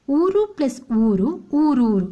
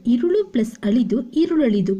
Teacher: ಪದವು ಲೋಪ ಸಂಧಿಗೆ ಉದಾಹರಣೆಯಾಗಿದೆ ಊರು ಪ್ಲಸ್ ಊರು ಊರೂರು ಇಲ್ಲಿ ಪೂರ್ವ ಪದದಲ್ಲಿ ಇರುವಂತಹ ಉ ಅಕ್ಷರ ಲೋಪ ಆಗಿದೆ